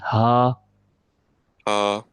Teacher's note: So it is a throat letter. We are pronouncing it from the throat. There is no tongue used in it, no lips.